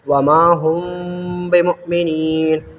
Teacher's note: میم ساکن کے بعد با آئے تو غنہ کے ساتھ اخفا کریں گے، اس کو اخفائے شفوی کہتے ہیں۔